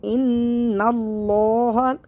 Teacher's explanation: نون مشدد کو ہمیشہ غنّے کے ساتھ پڑھتے ہیں، یعنی کہ ناک میں آواز چھپا کر پڑھیں گے ، یہ غنّہ ہے، نون کو لام سے ملا دیں گے،